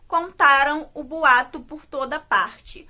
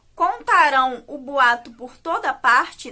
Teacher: Contaram aqui é o nosso verbo que está no tempo passado e que tem como sílaba tônica o tá, enquanto o contarão o boato por toda parte, né, esse verbo contarão, está no tempo futuro e tem como sílaba tônica esse finalzinho, rão, com a, ó, tio, diferente do tempo passado, que é com a, m.